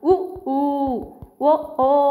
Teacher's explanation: సంవృతాలు పెదవులు గుండ్రంగా ఉన్నప్పుడు పుట్టేటువంటి అచ్చులని మనం ఏమంటామంటే వర్తులితాలు అని అంటామండి వర్తులితాలు అంటే పెదవులు మనం పలికినప్పుడు గుండ్రంగా ఉంటాయంట